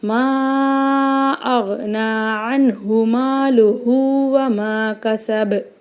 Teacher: இங்கே மீம் மேலே சின்ன மத்து வந்திருக்கு. இதை 4 அலிஃப்க்கு நம்ம நீட்டி ஓதணும்.